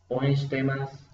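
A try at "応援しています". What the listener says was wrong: Un poquito más largo otra vez. O, no, solo O en O un poquito más alto.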